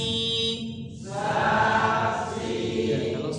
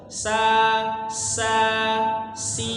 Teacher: hampir sama persis dengan huruf Sin huruf sa Bedanya cuma satu huruf SH itu dia tebal istila dan juga itbaq itbaq jadi dia sangat tebal Jadi kalau huruf Sin tipis banget